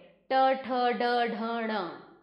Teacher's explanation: इनका उच्चारण स्थान मूर्धा है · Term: ट वर्ग